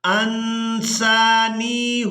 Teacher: نون ساکن پر اخفا کریں گے یعنی نون کی آواز کو ناک میں چھپا کر ادا کریں گے.